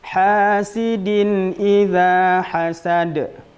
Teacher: Hasidin juga tanwin berjumpa dengan hamzah. Maka dia tidak boleh dibaca dengan dengung. Harus bacaannya jelas. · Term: izhar halqi